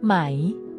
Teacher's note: with a high tone in Thai tones are essential to meaning the high tone starts at a high pitch and stays High making it distinct and easy to recognize in conversation [Music] if